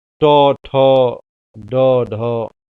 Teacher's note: ट ठ ड ढ यह ट वर्ग मूर्धा वर्ण होते हैं। इनके उच्चारण में जीभ हमारी तालु में सट जाती है, ऊपर टेढ़ी उल्टा होकर के, तो उसको मूर्धा कहते हैं।